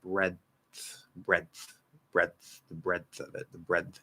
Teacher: we're actually going straight into a dental d but we kind of hold it for a second